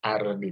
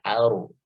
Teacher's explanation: Jadi tidak datar bibirnya ya, tidak ardi tapi aru, agak diangkat. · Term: dibaca tebal